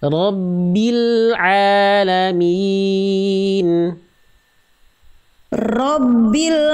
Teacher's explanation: rnya jangan terlalu bergetar